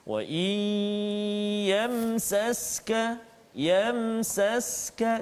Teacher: Yamsaska, mim mati bertemu dengan sin. Jadi izhar syafawi, jelaskan bacaan kita, tak boleh dengung.